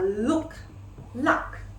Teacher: It is a phoneme in which the tongue tip stops at the roof of the mouth and the air passes over the sides of the tongue, as in the L phoneme. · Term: lateral, lateral sounds